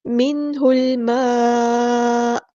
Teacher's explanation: نون ساکن کے بعد ہا گیا تو یہاں پر ہوگا ہمارا اظہار